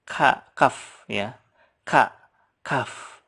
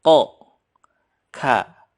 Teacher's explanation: Perbedaan dengan kof, kalau kaf itu pecah. Kaf ya. Kaf.